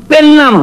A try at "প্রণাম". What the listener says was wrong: এর নাম নয়, কথাটা প্রণাম। একটা রফলা লাগবে।